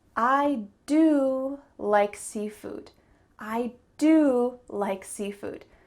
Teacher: There are 2 verbs, do and like, but one of them is emphasized. I do like seafood. It's the verb do. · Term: emphasis